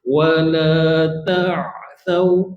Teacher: Sifat ain dia tawasud. Sebahagian huruf tertahan, sebahagian lagi terlepas.